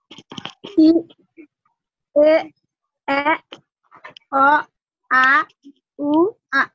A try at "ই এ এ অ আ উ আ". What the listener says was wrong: আর একটু শর্ট হবে।